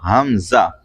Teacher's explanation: حمزہ حلق کے نیچے سے ادا ہوتا ہے